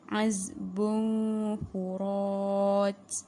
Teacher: dengung disamarkan dan terus masuk kepada huruf fa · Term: ikhfa